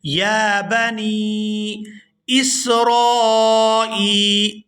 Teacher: نون یا زیر نی، اس کو کھینچ کر ادا کریں گے